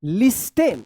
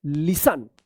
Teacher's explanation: क्योंकि यहाँ पे टी जो है ना साइलेंट रहता है। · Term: साइलेंट टी